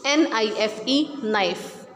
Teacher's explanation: We will not pronounce K, we will just pronounce NIFE, knife. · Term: silent